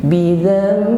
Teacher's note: Nun sukun bidan kita ganti pada huruf mim. Bidzam, dengan berdengung. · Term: iqlab